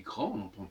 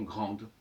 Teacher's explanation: Grand, sans E à la fin, on dit grand, on n'entend pas le D, et avec un E, on entend grande. Mais finalement, on n'entend pas du tout, il n'y a pas du tout de E, c'est simplement le D qui se prononce ou qui ne se prononce pas.